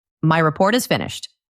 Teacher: make your voice go down at the end